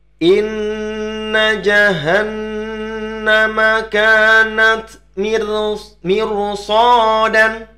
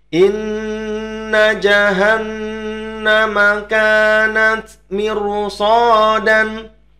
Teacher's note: Ya, hati-hati, kami mempertebal 'ro'.